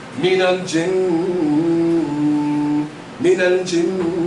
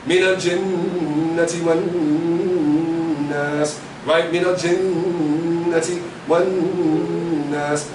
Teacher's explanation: Whenever we have noon with the shadda, it gets ghunna, right? Meaning we hold it, because it's shadda, then we give it the nasalization.